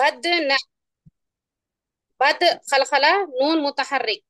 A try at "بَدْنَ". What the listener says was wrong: اس کو نون نہیں پڑھے آپ، نہ پڑھے اس کو، تو نہ پڑھیں گے ہم قاعدے.